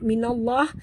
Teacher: Kerana di atas lam ada tasydid, lam di tengah-tengah lam pada lafzul jalalah ya. Dibaca tebal kerana nun berbaris di atas. · nun ini masuk terus ke dalam lam disertai dengan tekan atau penjut ya. Kerana di atas lam ada tasydid, lam di tengah-tengah lam pada lafzul jalalah ya.